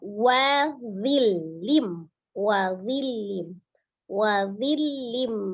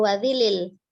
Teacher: dhil. Ya, karena dia tanwin bertemu dengan mim, idgham langsung dibaca ke mim, tasdid